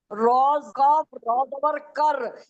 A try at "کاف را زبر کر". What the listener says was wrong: را کاف، را زبر کر نہیں، کاف را زبر کر ہوتا ہے. آپ الٹا بول رہی ہیں، آپ الٹا پڑھ رہی ہیں. را بعد میں، کاف پہلے ہیں. آپ ہجے غلط کرتی ہیں نا.